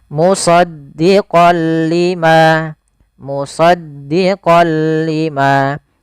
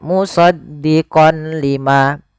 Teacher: Awalnya kalau kita baca musaddiqon karena bertemu dengan huruf lam, tanwinnya masuk ke huruf lam, suara n-nya dihilangkan menjadi maaf diganti menjadi huruf lam. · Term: idgam bila gunah